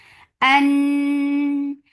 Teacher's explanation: Noon will get sifa of gunna. And this gunna is akmal, so keep the sound in your nose for a longer time.